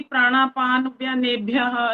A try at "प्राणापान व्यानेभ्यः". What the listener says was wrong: इसमें ये हुआ प्राणापान, न जो है ना आधा बोला आपने। बस प्राणापान हो गया, पान पान, प्राणापान व्यानेभ्यः